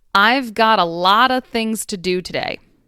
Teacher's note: the v sound in both of and have will disappear and leave only a schwa sound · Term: elision